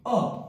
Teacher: एकमात्र मध्य स्वर जीभ की स्थिति के आधार पर है